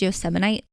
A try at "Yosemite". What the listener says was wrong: There's no Yosemite. You just added a whole extra syllable in there.